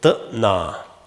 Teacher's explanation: Now the k dropped out, it became a glottal stop